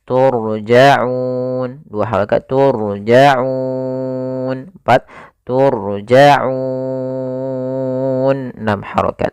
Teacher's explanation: Sebelumnya ada huruf mad, maka au-nya ini kita boleh panjangkan 2 harokat, 4 harokat atau 6 harokat. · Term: mad arid lis sukun